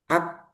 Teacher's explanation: itu syiddahnya, macet. Jadi suaranya tertahan dulu. Ak, nah, ketika dilepas baru muncul hamasnya.